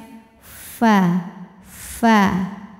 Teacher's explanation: Fa ada anginnya ujung gigi seri atas kita menyentuh bibir bawah bagian dalamnya bagian basahnya ya Jadi ada anginnya bunyi F fa fa nah kemudian walaupun depannya